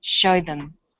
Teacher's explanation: Here, show is stressed and them is unstressed, so we say show them. This is vowel and consonant linking.